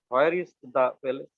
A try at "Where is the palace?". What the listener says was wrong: No, no, no, no, no, no, no, please. Where is the palace? Place না, palace মানে প্রাসাদ।